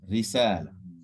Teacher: when it's a zer or a kasra under it, like Risala, it's empty mouth